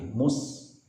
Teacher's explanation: Ketika mu bibir maju, maka ketika sin untuk melepaskan desisnya, maka bibir harus kita tarik mundur lagi